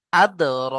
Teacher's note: আদ। র খাড়া জবর র, একালিপ টান দিতে হবে।